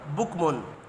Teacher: تنوین کے بعد حروف حلقی ہے، اظہار حلقی ہوگا، غنہ نہیں ہوگا